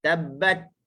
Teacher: wa tabbat bat kita tahan syiddah dulu. Hujung lidah digusi tu. · Tabbat dia tahan. Dia potong suara dah. Lepas tu baru kita lepas hams. Tabbat sikit je.